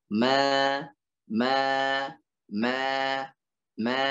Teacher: ma ini alif, sebelumnya adalah fathah, ya maka dibaca dua harokat. Dua harakat.